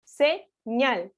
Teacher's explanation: tanto si estamos hablando de una palabra aguda por qué porque su sílaba tónica o fuerza de voz recae sobre la última posición · la sílaba tónica recae sobre la última posición nuevamente estamos hablando de una palabra aguda